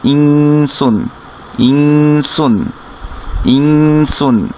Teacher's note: কিন্তু নুন সাকিনের পরে যেহেতু সিন আসছে, এই নুনের সাউন্ডটাকে আমরা একটু গোপন করে নাকে অর্থাৎ নেজাল সাউন্ড করে আমরা পড়ব